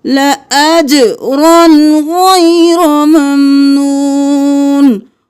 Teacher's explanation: اجرن نہیں کیا، آگے غین ہے تو ہم اظہار کریں گے، الف نہیں پڑھیں گے.